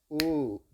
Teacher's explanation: சொடுக்கு முடிஞ்சதுக்கு அப்புறமும் உன்ற வார்த்தை உச்சரிப்பு கொஞ்சம் இழுவையா போகுது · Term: நெடில்